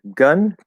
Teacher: Technically, it's the upside down V in IPA, the not true schwa, as I call it. But yes, that is the schwa sound, the sound.